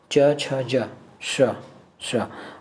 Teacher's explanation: अब इसे को वहीं से आपको श को बोलना है, श। आपका जीभ जहाँ च छ ज बोलने में जा रहा था, ठीक है, वहीं आपको श बोलने के लिए जीभ ले जाना पड़ेगा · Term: तालु